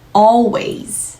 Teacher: 단어의 끝 혹은 음절의 끝에서 모음처럼 목구멍에서부터 울림 소리로 표현하는 저 엘 소리를 Dark l